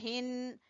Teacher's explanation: हा गले के आखिरी हिस्से से